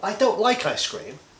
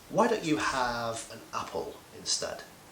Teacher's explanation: So rising and falling intonation for criticism and suggestions. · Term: rising followed by falling